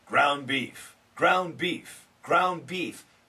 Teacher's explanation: We can cancel the D because of the N.